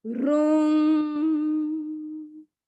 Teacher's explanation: इसमें दीर्घ ऊ है, लंबा ऊ, लॉन्ग ऊ है, इसीलिए उसका उच्चारण भी हमको लंबा करना है